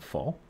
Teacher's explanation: labiodental for a movement that involves both your teeth and your lips, like the F and fall.